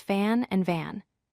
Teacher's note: Notice how the only difference is the voicing. The mouth position is exactly the same, but the vibration of the vocal cords creates two completely different sounds and meanings. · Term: voicing contrast